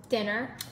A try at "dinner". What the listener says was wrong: It's dinner. There's no R.